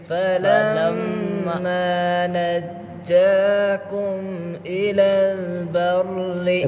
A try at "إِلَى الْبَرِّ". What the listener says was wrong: را باریک بنی إِلَى الْبَرِّ